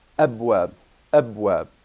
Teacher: the first Alif is the seat of the Hamza. And this is the Hamza. It gives you this glottal stop.